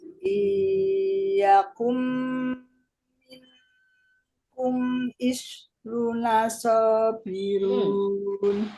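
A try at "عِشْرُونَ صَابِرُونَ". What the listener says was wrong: Runya masih kurang, Bu. Isyruna. runya kurang panjang.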